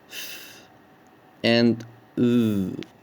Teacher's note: dental, by putting the tip of the tongue against the upper front teeth to produce sounds like th and th